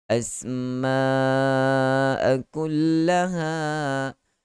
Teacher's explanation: ada bunyi safir di situ. Ada bunyi seperti geseran.